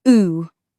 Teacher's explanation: The classic ooh in goose used to be so rounded and far back, but now it's drifted closer to the center of the mouth for many speakers.